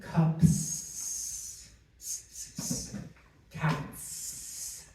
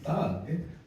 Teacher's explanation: the letter S is actually making that sound Z and not S.